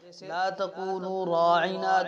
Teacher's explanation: را کے بعد میں الف ہے، یہ الف بھی پر کر کے پڑھا جا رہا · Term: الف مفخمہ